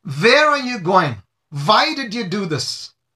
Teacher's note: so V replaces the W subconsciously